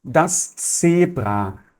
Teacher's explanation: Z vai ter o som sempre de TS, como se fosse na palavra pizza, tá bom?